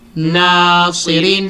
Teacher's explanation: meron pong stress sa na dahil sa alif sukun